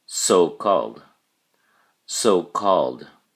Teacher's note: pronounce the final d sound and put the emphasis or stress on the first syllable